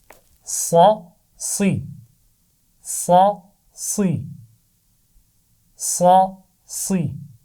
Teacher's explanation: صاد کی آواز بھی موٹی رہے گی، سوئی نہیں پڑھنا اس کو